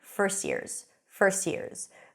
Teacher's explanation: When the T appears between 2 consonants, usually it's dropped.